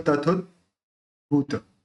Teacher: द बोलते समय जो जीभ जो है ऊपर तालू पर टच होती है तो वहां प टच होके रहेगी और फिर अपन भ का उच्चारण करेंगे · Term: आधा द